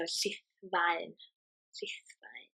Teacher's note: So Llith, double L, TH is th, Llith. The F is a V sound, and the AE is a I sound, like in words like my.